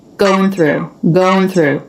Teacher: we have an unvoiced th with an R now the tongue does have to come through the teeth here